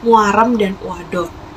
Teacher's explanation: Yang pertama ada diftong turun membuka maju gabungan huruf U dan A